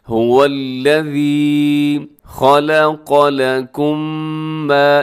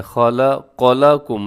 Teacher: خا موٹا پڑھنا ہے، لام باریک ہے، پھر قاف پھر موٹا آ گیا، تو یعنی کہ آس پاس دونوں حروف موٹے ہیں لیکن درمیان میں جو لام ہے وہ باریک ہے۔